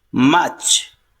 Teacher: In British pronunciation, R is silent here.